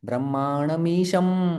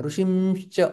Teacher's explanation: तो फिर हमारा म के लिए ओठ बंद हो रहा है क्योंकि यह प ब म वाला है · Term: अनुस्वार